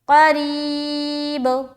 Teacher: با کے اوپر سکون آ جائے گا، تو اب ہم یہاں پر قلقلہ کرتے ہوئے رکیں گے